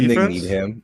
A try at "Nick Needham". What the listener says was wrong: can you say Nick Needham, though? Because you don't pronounce the H. No, you said Needham. You say need ham all the time. Like you need ham. No, it's need him.